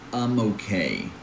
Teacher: because one word ends in a consonant, in this case the letter M, and the next word begins in a vowel, in this case O, we split the sounds differently. It's like we're bringing the letter M to okay.